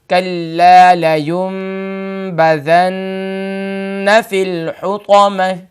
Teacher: ناک کے بانسے میں تھوڑی دیر آواز کو روکے رکھنا، یعنی taking the voice into nose 2 second, یعنی 2 سیکنڈ کے لیے آپ اپنی آواز کو ناک کے اندر روکے رکھیں گے. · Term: غنہ